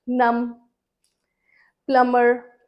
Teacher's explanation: जहां पर एम और बी इकट्ठे आते हैं तो उनका साउंड म रहता है, ब साउंड नहीं आता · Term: बी इज साइलेंट